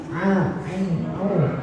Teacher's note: Jadi makhraj ain a a itu bukan di hidung, bukan masuk di hidung